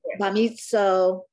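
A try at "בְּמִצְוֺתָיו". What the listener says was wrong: No, it can't be O because there's no vowel. There's no consonant if you do that. It's bamitz.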